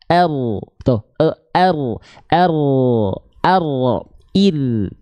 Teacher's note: Tawasud itu artinya mengalir sedikit suara huruf ro. R. Tuh, ada kan nggak langsung R, nggak langsung berhenti kan?